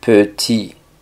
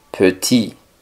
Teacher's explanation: Y la T del final no suena.